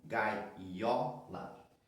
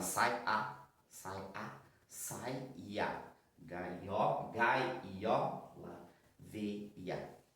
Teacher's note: Nós falamos assim, gai, ió, percebam, nós colocamos mais um i